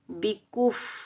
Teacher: با کے نیچے زیر بغیر کھینچے پڑھیں گے۔ اس کاف کو، یہ باریک کاف ہے، چھوٹا کاف ہے، اس کو ہمیشہ باریک پڑھیں گے، ٹھیک ہے، موٹا نہیں پڑھیں گے۔